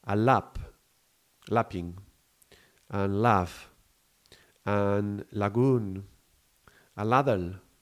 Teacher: Even though there is this blockage of the tongue, it's quite soft and it's quite relaxed. The L, it's quite relaxed. · There is the air passing through the sides of the tongue, and there is no burst, there is no hiss, there is no blockage. It's just liquid moving through an obstacle. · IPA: /l/